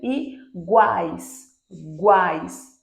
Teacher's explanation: primeiro uma semivogal depois uma vogal em seguida outra semivogal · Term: tritongo